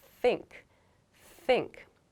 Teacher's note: make the th sound in think there's no voice like there's no vibration in your vocal chords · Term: unvoiced sound